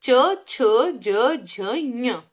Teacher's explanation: तो ये तालु यानी तालव्य व्यंजन हो गए, तालु से निकलते हैं